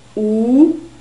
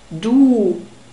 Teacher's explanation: it's a very close sound ooh and the inner surfaces of your lips are exposed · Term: long o sound, long U sound